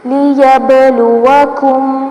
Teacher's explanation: با ساکن آ رہا ہے، حروف قلقلہ میں سے ہے تو اس کو ہلا کے پڑھیں گے